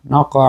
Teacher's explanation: কলকলায় সুগরা, কারণ শব্দের মাঝখানে আসছে